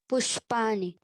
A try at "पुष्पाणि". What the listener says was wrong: पुष्पाणि। ना नहीं बोलना है, ना बोलोगे तो नानी याद आ जाएंगी। क्या बोलना है? पुष्पाणि। पुष्पाणि, ना बोल रहे हो तुम लोग, ना, डोंट से ना। पुष्पाणि, नीन मत बोलो, री बोलो, पुष्पाणि।